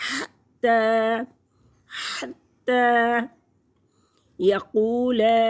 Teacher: हत्ता हत्ता यक़ूल, क़ाफ मोटा पढ़ेंगे। ज़बान का पिछला हिस्सा उठेगा और तालु के नरमी से कुछ टच करेगा तो मस करेगा तो क़ाफ अदा होगा।